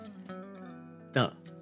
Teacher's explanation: The stop's going to be made by touching your tongue to the tip of your teeth.